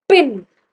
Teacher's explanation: जब आप पिन बोल रहे हो तो पिन एस्पिरेटेड है, मतलब पिन आपको लगेगा कि अच्छा सांस, एक पफ ऑफ एयर आ रहा है, you can feel that puff of air.